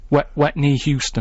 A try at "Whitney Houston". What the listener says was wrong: There's no artist called Whitney Houston. No, don't try and make wet sound like wit.